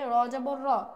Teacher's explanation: র মোটা হরফ, এ কারণে কিন্তু রর যে হরকত অর্থাৎ জবরটাও কিন্তু হরফের কারণে মোটা হচ্ছে। তো সহজে আমরা জানি যে যেখানে আমাদেরকে হরফ মোটা থাকবে সেক্ষেত্রে আমাদের হরকতকেও মোটা করে পড়তে হবে।